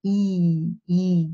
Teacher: this is a high front German front vowel